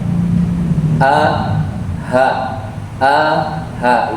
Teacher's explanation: hamzah itu makhrajnya di pangkal tenggorokan yang dalam. A, ha, itu satu makhraj. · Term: hamzah sukun